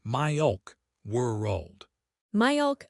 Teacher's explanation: It sounds deep and hollow. For milk, don't touch the tip of your tongue for the L. Make a sound like in the back of your throat. · The dark L happens at the back of the throat. You raise the back of your tongue, almost like you are making a G or K sound, but you keep the air flowing. It sounds deep and hollow.